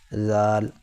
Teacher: زال کو نکالتے وقت بھی زبان کی نوک دانتوں سے باہر لائیں گے